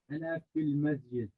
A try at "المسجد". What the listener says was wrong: When the scene comes next to a gene, separate it. Don't say mez. Say masjid. Don't say mez. Mez. Now, make the scene by itself. Masjid. Al masjid. Don't say masjid and don't say mez. Al masjid.